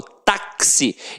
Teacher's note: o X aqui tem som de KS, ou seja, uma letra tem 2 sons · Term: dífono